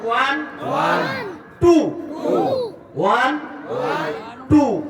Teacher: টুর মধ্যে ঠোঁট গোল হয়েছে না?